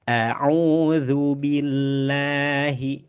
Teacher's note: Billah di sini ada huruf ba. Huruf ba di mana tadi? ada di dua bibir ya.